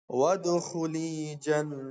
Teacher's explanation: نون پر جو ہے یہاں پر تشدید ہے، نون مشدد ہے تو یہاں غنہ کرنا ہے